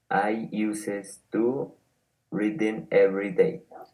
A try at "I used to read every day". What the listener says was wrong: Okay, be careful with the pronunciation. It is not uses, because when you say uses, you are saying something else. Like to use something. So be careful.